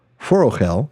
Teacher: know that in words of three or more syllables like forel the stress falls on the last syllable but one